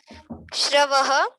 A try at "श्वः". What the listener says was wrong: देखो स्वः लिखा है स्वः हाँ रा नहीं बोलना है कहीं रा नहीं आना चाहिए श्रवण वाला स्रा नहीं है ये स्वः है स्वः परस्वः प्रपरस्वः बोलिए